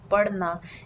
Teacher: the pronunciation of this particular d that I'm saying here in the verb parna is the rolled D sound or you could also call it the rolled R sound so how to pronounce this just roll the tongue slightly inward